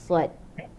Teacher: Lepas tu hujung lidah ni pergi ke gigi bawah, so dekat tengah ni dia macam berkolam. Bila kita sebut huruf sad, tengah lidah dia akan macam berkolam.